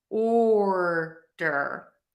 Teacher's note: And then I have order, where my tongue is going to pop down, or flip back, depending on how you make your R.